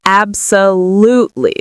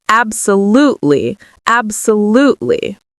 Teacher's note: So how do we pronounce absolutely? So the stress is on the third syllable.